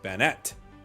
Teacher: it's pronounced Bannet. Emphasizes on the second syllable.